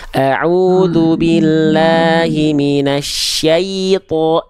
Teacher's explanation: Pastikan jelaskan dulu syai baru masuk ke to, jangan syayato.